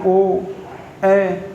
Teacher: अर्ध समृत स्वर जिनके उच्चारण के समय मुंह थोड़ा सा खुलता है, बोल के देखिए ओ, ए, बिल्कुल थोड़ी सा मुंह खुलता है, इसे अर्ध समृत स्वर कहते हैं।